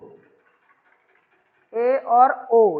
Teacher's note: यानी इसे बोलने के लिए हमारा मुंह है तो ऊपर से क्लोज हो रहा है, लेकिन पूर्ण नहीं, आधा क्लोज हो रहा है। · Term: अर्ध संवृत